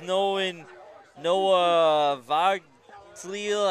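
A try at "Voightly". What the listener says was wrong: Boatley. G is silent.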